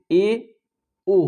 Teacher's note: अर्ध समृद्ध क्या होता है, मतलब आधा मुंह खुलता है